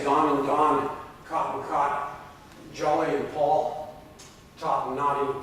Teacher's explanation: In Canada, the words in these 2 lists are all pronounced with the same vowel. For me, the vowel is low back and rounded ah. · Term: unmerging of back vowels